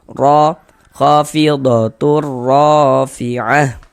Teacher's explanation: Huruf ro kalau dia memiliki harokat fathah atau dhammah, maka huruf ro dibaca tebal, dibaca tafkhim. Sehingga pangkal lisan kita naik terangkat ke atas ketika kita mengucapkannya.